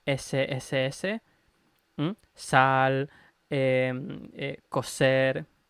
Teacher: en español europeo estándar esa s sss sal coser etcétera que esa s se le considera como una s retraída o con una posición de la lengua un poco más retraída